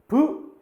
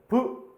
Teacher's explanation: 막았던 공기를 빵 하면서 파열시키죠. 그러면 비읍은 입술에서 소리 나면서 파열의 방법으로 발음되는 자음이다.